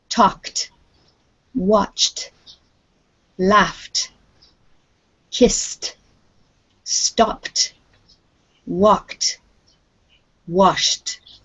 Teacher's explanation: all of these are what we call unvoiced it means that this sound stays in our mouth and doesn't come from the throat so a k sound is inside your mouth not down in · If you try those sounds, you'll realize that they are all formed in your mouth without any voicing to it. If there is no voice, then the sound of ED will be t.